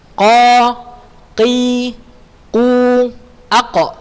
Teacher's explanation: Di mana tak huruf qa pangkal lidah paling belakang pada posisi menempel langit-langit bagian yang lunak atau daging paling belakang setelah tenggorokan.